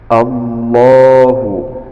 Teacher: Allahu ada lam jalalah, dibaca tafkhim karena diawali dengan harokat fathah